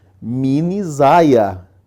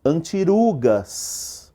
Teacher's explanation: A hora que você junta, o R e o S, eles perdem a força do S e do R.